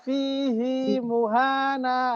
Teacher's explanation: Imam Hafs membaca fihi muhana, hinya malah panjang.